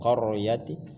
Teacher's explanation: kemudian ro dibaca dengan tebal, namanya tafkhim, tebal qaryati dan bukan qaryati.